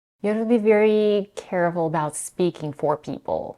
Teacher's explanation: the first consonant h is dropped and the vowel as in cat is reduced to a schwa. So you have is blended into you have.